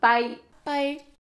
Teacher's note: the music or intonation rises, then falls on the single syllable